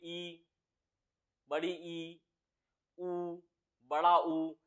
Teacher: मुख द्वार लगभग बंद रहता है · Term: संव्रत स्वर